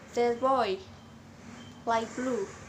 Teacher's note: when T is followed by B, it usually changes into a P sound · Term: Assimilation of place